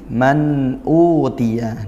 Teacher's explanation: Izhar halqi. Dibaca jelas tidak dengung dan sempurnakan sifatnya seperti itu. · nun sukun bertemu hamzah. Apa? Izhar halqi, dibaca jelas tidak dengung